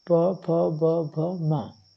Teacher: अब ओष्ठ जो है, तो ओष्ठ की जब हम उच्चारण करते हैं ओष्ठ से, ठीक ना, तो इसमें क्या है, प में हमारे ओष्ठों की आवश्यकता होती है